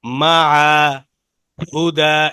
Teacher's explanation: আলিফ যেমন পড়া যাবে না, ইয়াটাও পড়া যাবে না, তবে ওয়াকফ করলে এক আলিফ টান হয়। মা, হুদা, এভাবে টান হয় যদি আমরা এইসব এখানে ওয়াকফ করি বা থামি, ঠিক আছে?